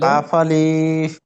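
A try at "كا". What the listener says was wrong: আলিফটি টান হয়ে যাচ্ছে, কাফ, আলিফ, কাফ, আলিফ।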